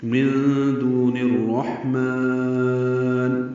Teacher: نون کو جو را سے ملایا ہے یہ ادغام شمسی ہوا ہے، الف لام نہیں پڑھیں گے